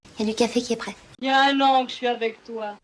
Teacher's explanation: In everyday spoken French, the il y a tends to become ya. It's how we pronounce it in everyday life.